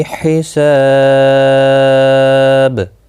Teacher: یہاں پر با ساکن کے اوپر قلقلہ بھی ہوگا اور ملانے کی صورت میں ادغام ہوگا باللا گنہ، کیونکہ یرملون کا لام آیا ہے تنوین کے بعد، تو با پر قلقلہ ہوگا وقف کی صورت میں